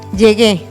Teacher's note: llegué tiene su sílaba tónica en la gue y la vocal tónica es la e